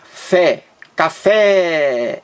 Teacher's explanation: duas sílabas a sílaba mais forte é a última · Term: palavra oxítona